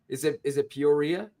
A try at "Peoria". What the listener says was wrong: No, it's Peoria. You were saying Peoria. you were getting rid of the last I.